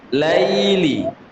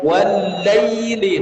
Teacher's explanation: ya sukun itu lin. Ada sifat namanya lembut.